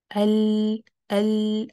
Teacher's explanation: لام چونکہ light letter ہے تو زبان پیچھے سے نیچے ہے، اور یہ چونکہ فرنٹ پہ ٹچ کر رہی ہے تو سامنے سے آواز باہر سیدھی سیدھی سی نہیں آتی، کیونکہ آپ نے اس کو کلوز کیا فرنٹ سے. لیکن سائڈ سے آپ دیکھیں گے ال جب ہم کرتے ہیں نا تو آواز ان جگہوں سے سائڈوں سے نکلتی ہے